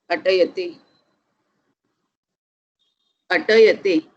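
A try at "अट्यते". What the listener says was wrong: Atyate. Atyate. Hrisva. Okay. Atyate. Hrisva in the sense there is no akara there.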